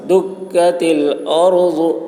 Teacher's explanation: دکت، باریک ہوگی کاف کی آواز، دکت الارض، را پر ہوگی، ضاد کی آواز موٹی ہوگی